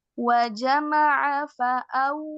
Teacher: huruf wau di sini ee sifatnya rakhawah mengalir. Jadi jangan buru-buru.